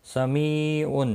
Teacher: می یا مدہ ہے، ایک الف کے برابر کھینچ کر پڑھیں گے۔ تنوین کے بعد حروف حرکی کا آئینہ ہے، اظہار حلقی ہوگا۔